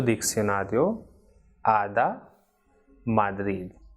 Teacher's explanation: this d is not like in English door but it is soft one